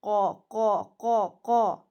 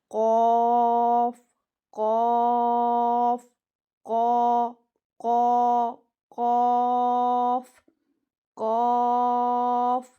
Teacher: یہ زبان کی جڑ، پیچھے سے زبان کی جڑ اور جو کوے کے قریب حصہ ہے نا اس سے ادا ہوتا ہے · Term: موٹا قوف